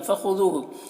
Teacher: خا کو پر پڑھیں گے، یہ حروف مستعلیہ میں سے ہے۔ ذو میں واو مدہ ہے، اسے 1 الف کے برابر کھینچیں گے۔